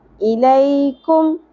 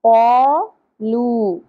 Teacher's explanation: کاف باریک پڑھی جائے گی، جبکہ یہاں پر ہم نے قوف کو پر پڑھا تھا اور نرم تالو سے ادا کیا تھا